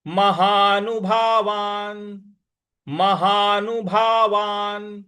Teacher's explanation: ऊ की मात्रा है भावा और जो न है इस पर न जो है हमको साइलेंट में बोलना है क्योंकि इसके नीचे हलंत है